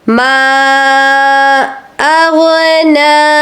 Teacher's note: ما کو آپ نے 4 الف کے برابر کھینچ لینا ہے۔ اغنا آپ نے کہنا ہے، غائن کو غائن ہی پڑھنا ہے، گاف کی آواز نہیں آنی چاہیے۔